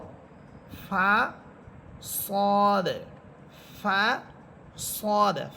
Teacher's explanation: ফা হরফটা বাতাস ছেড়ে দিয়ে পড়বেন